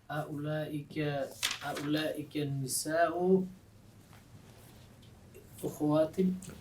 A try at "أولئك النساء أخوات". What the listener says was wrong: Oh, with a fatha at the beginning. أخوات. أولئك النساء أخوات. Remember, أخوات is for أخت. إخوة with a kasra at the beginning is for أخ. إخوة, أخ. أخوات, أخت.